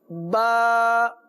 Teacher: تو با دونوں ہونٹوں کے تر حصے سے ادا کیجئے.